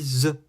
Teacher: la langue est vers les dents quand je dis z